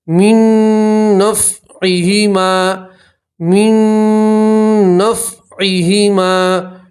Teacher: نون کا نون کے اندر ملا دیں گے اور ایک الف کے برابر گننا کریں گے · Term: ادغام